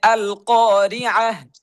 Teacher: এই তা যদি কোনো ওয়াকফের শেষে থাকে, তাহলে এই তা তা হবে না, এটা পড়তে হবে হা। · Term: গোল তা